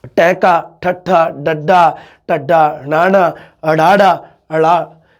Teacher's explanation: ਜਦੋਂ ਤੁਸੀਂ ਬੋਲੋਗੇ ਤਾਂ ਸਾਡੀ ਜੀਭ ਮੁੜ ਕੇ ਉੱਪਰ ਤਾਲੂਏ ਨੂੰ ਟੱਚ ਕਰਦੀ ਹੈ। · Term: ਉਲਟ ਜੀਬੀ ਜਾਂ ਮੂਰਧਨੀ